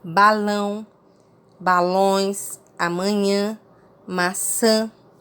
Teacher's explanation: o ar deverá sair pela boca e pelo nariz em um sinal de nasalização